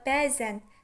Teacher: Yaxuda, bəzən sözündə vurğu bə hecasının üzərindədir. Həmçinin burda uzanma da bə hecasının üzərindədir. Deməli, vurğu və uzanma eyni hecanın üzərinə düşüb.